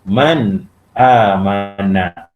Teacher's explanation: Semua pelajar faham bila belajar ilmu tajwid, bila izhar halqi, bila nun sakinah bertemu dengan huruf alif, maka dia kena baca jelas dan terang. Tak boleh dengung.